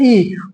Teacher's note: ये तालु से निकल रही है ई।